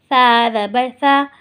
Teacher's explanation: ثا نرمی والے حروفوں میں سے ہے تو ہم نے یہاں اس کو سیٹی نہیں نکالنی ہے